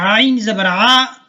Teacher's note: جب آپ کہتے ہیں حمزہ زبر آ اور عین زبر آ، عین زبر آ میں جو ہے درمیان سے آواز نکلے گی، گلے کے درمیان سے لفظ عین ادا ہوتی ہے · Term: عین کا مخرج